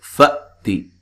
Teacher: हमजा को झटके से अदा करना है